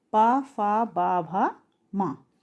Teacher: और पवर्ग यानी कि पा फा बा भा मा, इनका उच्चारण स्थान क्या होता है? ओष्ठ